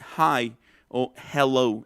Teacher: esa es la consonante aspirada, que es cerrando un poquito la glotis